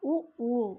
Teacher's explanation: இதழ்களை குவிப்பதால் பிறக்கும் எழுத்துக்கள்